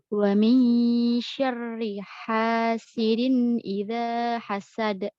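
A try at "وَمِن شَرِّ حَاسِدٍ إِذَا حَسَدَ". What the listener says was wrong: Udah nggak perlu ada dikoreksi. Udah bagus ya, udah pas.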